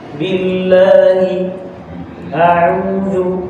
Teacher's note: اللام مرققة، قبلها كسر نرقق اللام